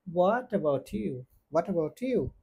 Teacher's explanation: এইচ এর উচ্চারণ হবে না আর এই টি সাউন্ডটা এই ওয়ার্ডের সাথে উচ্চারিত হবে আর এই টি টা চলে যাবে ইউ এর সাথে এইজন্য এটার উচ্চারণ হবে হোয়াট এবাউট ইউ হোয়াট এবাউট ইউ আরেকটা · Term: কানেক্টেড স্পিচ